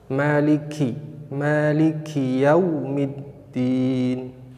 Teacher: ketika membaca huruf kaf ada nafas yang terlepas atau keluar